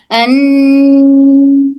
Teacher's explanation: सिर्फ अन इस तरह से नून बोलकर महसूस करें कि आवाज सिर्फ मुंह से नहीं बल्कि नाक से भी आ रही है। अगर नाक से आ रही है तो दुरुस्त अदरवाइज़ फिर हमसे गलती हो रही है।